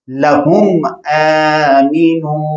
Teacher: तो यहाँ इज़हार शफ़वी होगा, यानी मीम को जाहिर करके पढ़ेंगे, यहाँ हुन्ना नहीं करेंगे